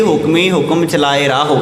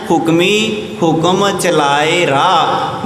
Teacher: ਰਾਰੇ ਨੂੰ ਕੰਨਾ ਹਾਹਾ ਤੇ ਹਾਹੇ ਨੂੰ ਔਂਕੜ ਲੱਗਾ ਹੋਇਆ ਹੈ, ਪਰ ਇੱਥੇ ਬੋਲਿਆ ਨਹੀਂ ਗਿਆ।